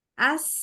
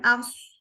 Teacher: Desisnya mirip. Punya sama-sama sifat sofir.